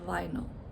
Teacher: so the schwa is the second syllable